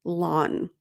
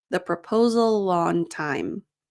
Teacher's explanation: the consonant sound at the end of proposal, the L sound, and the vowel sound, of on, links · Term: linking